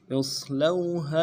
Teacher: اصلوها میں حمزہ کو صاد کے ساتھ ملانا ہے، صاد موٹا حرف ہے، سیٹی موٹی ہوگی